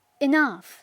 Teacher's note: al principio lleva este sonido que es intermedio entre una E y una I